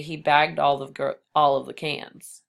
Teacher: And when you say bagged all, it sounds like doll.